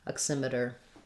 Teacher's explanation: a t in between two vowels in front of an unstressed syllable will sound more like a light d we call it a flap t i just lightly touch up